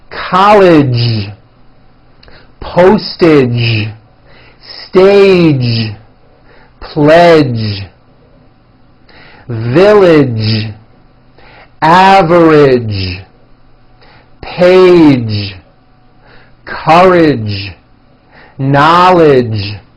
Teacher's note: the American Jay sound at the ends of words be sure to keep the voicing going throughout the whole word